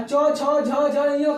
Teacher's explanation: और च, छ, झ, झ, य का उच्चारण स्थान तालु से होता है